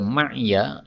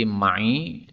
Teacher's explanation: Kemudian pada ayat 83 ma'ya, ini ya-nya boleh disukun menjadi ma'i dan ini berulang dua kali ya, ma'i.